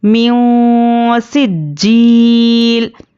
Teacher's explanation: नून की आवाज़ को नाक में छुपा कर पढ़ेंगे। इख्फ़ा की मिक़दार एक अलिफ के बराबर है।